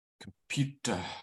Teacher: surrounding that oo sound, the first and the last vowels are weaker.